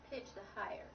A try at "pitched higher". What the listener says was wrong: Not pitched a higher, pitched higher. Pitched higher. So in order to get you to leave out the extra syllable, I had to slow you down. So it's not pitched a higher. That's not a word. Pitched higher.